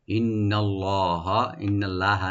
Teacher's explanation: ইন্না নুন মুসাদ্দাদ এখানে ওয়াজিব গুন্না, আর লাফজুল জালাল এখানে আমরা ডি পুরি পড়ব।